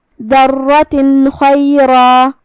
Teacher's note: پھر حرف الخاء آتا ہے کلمت خیرن میں، یہاں حکم ہے اظہار، تو ہم یہاں نون ساکن ادا کریں گے اور بغیر غنہ کی حکم کو ادا کریں گے